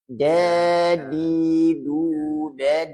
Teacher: dal itu ada sifat syiddah pak jadi kuat